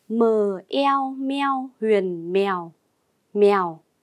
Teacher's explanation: Chúng ta cùng tìm hiểu vần eo có trong tiếng mèo. Tiếng mèo gồm âm đầu mờ, vần eo và thanh huyền. Phần eo được đánh vần và đọc trơn như sau: e o eo, eo.